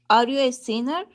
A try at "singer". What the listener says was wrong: Okay, are you a singer? Singer. Singer. Okay, sounds like sinner. Okay, so singer.